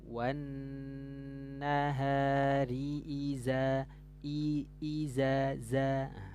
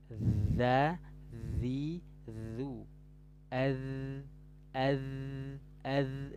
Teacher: makhrajnya ujung lidah sedikit keluar menyentuh gigi seri atas nih ujung lidahnya sedikit keluar menyentuh gigi dari atas dza dzi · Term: huruf dalal